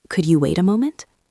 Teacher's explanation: Notice the intonation. It goes up